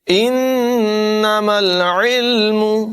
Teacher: نون مشدد میں غنہ کر کے پڑھیں گے اور عین کی آواز نمایاں کریں گے، یہاں پر بھی عین کی آواز نمایاں ہوگی۔